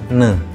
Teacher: Bunyi ini melibatkan daun lidah sebagai artikulator aktif dan langit-langit keras sebagai artikulator pasif. Artinya, daun lidah menyentuh langit-langit keras untuk menghambat udara yang keluar melalui rongga mulut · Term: bunyi laminopanatal ne